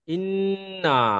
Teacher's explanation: তাসদিদ আছে, হ্যাঁ, নুনের হ্যাঁ। উপরে তাসদিদ এসেছে, সেই জন্য নাকের শ্বাসে টানটা দিতে হবে। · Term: গণ্যা